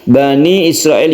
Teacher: untuk tanda iqlab nun mati bertemu dengan ba itu diiklabkan atau diganti nunnya itu menjadi suara dari mim dan dipanjangkan